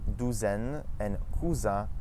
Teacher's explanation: The S in between two vowels, as well as the Z sound, make a Z.